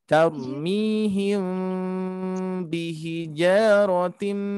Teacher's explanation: di sini Ikhfa Syafawi syafawi itu adalah dua bibir ya jadi menyembunyikan bunyi mim sukun bertemu ba